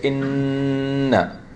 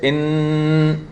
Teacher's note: Your tongue, as I mentioned last time, is preventing the air from coming out. When you say inna, when you say in, your tongue is blocking the air from coming out. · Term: noon